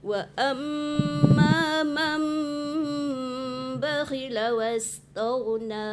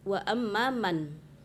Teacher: Yang namanya iklab itu ada dengung